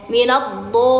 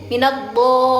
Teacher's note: Sisi lidah bertemu geraham atas. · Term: huruf dha